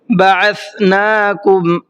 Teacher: سا کو سافٹ کر کے پڑھنا ہے ذال کی طرح